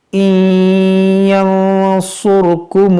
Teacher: نون ساکن کے بعد یا حروف یرملون ہے یہاں پر ادغام ہوگا اور پھر نون ساکن کے بعد صاد ہے یہاں پر اخفا ہوگا.